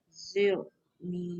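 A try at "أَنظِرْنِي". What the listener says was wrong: Wir. Lidah tak keluar. Kalau sebut seketul dia keluar. Bila berketul tu dia.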